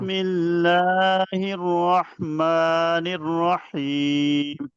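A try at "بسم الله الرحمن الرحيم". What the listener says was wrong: اب آپ جب بسم اللہ پڑھیں گے نا تو بسم اللہ میں را پر آپ نے ہونٹوں گول نہیں کرنا. بسم اللہ الرحمن الرحیم. جب آپ اس کے نا دن کو نا مشق کرے سامنے رکھیں آئینہ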